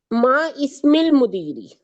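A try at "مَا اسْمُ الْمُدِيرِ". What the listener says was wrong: नो, देखिए ये अलिफ भी खाली है, ये अलिफ भी खाली है, इन दोनों को नहीं पढ़ेंगे। जब जो हरफ खाली होता है उसको नहीं पढ़। मस्मुल मुदीरी, यहाँ पर ये अलिफ खाली था, इसको नहीं पढ़ेंगे। जो हरफ खाली होते हैं उनको नहीं पढ़ते।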